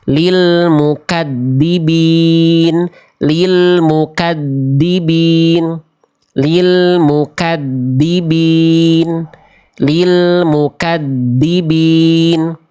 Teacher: Salahnya suaranya tertahan. Terlalu ditekan ujung lidahnya atau terlalu digigit, jadinya suaranya mampet.